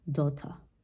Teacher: Once again, there's going to be a difference between American English, in which they pronounce the R at the end of the word, daughter. But in the case of British English, it will sound more like daughter. Okay, so yeah, they do not pronounce this R at the end of the word, and this is why the sound just sounds like daughter.